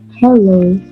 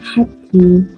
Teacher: The sound is from the flow of air through the open glottis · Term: glottal